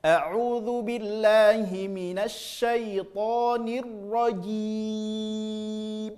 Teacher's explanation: jim juga enggak masuk ke hidung, ya juga enggak masuk ke hidung karena huruf mad, karena keluar dari al-jauf